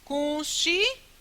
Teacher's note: o U vai ser identificado como vogal e o I vai ser identificado como semivogal